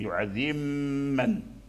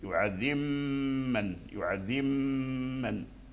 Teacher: فالميم مشددة فيها الغنة، أولا تخرج من الشفتين، وأثناء خروجها من الشفتين تسمع صوت الغنة يخرج من الخيشوم